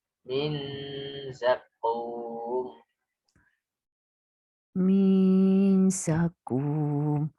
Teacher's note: nun sukun bertemu za itu memang ikhfa, tapi ada unsur gunnah. Ya, maka menahannya itu agak lama. Min za untuk memunculkan sisi samar dari nun. Nah, itu harus dengung.